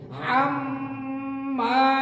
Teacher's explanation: হাম গুন্না হবে মা টান হবে >> হাম্মা >> হাম্মা >> হা গলায় চাপ দিয়ে হাম্মা >>